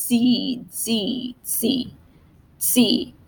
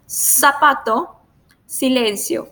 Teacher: in Latin America we have the same sound for the C and the s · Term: soft sound